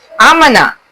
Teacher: अलिफ की आवाज हलक से निकलती है।